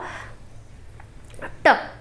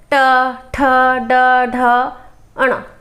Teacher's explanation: जो जीभ का अगला हिस्सा है ना, ये क्या होता है, पलट कर टकरा कर जो ध्वनि का उच्चारण करते हैं, जो वर्ण का उच्चारण करते हैं, उसे मूर्धन्य वर्ण कहा जाता है।